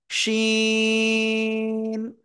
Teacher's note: জিহ্বার মধ্যখান উপরে তালুর সাথে তার বরাবর লাগবে, লাগিয়া শা শা শব্দ করে উচ্চারণ করব।